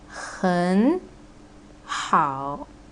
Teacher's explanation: Both are the third tone, right? So you need to change the first syllable into the second tone, which is gonna be 很好.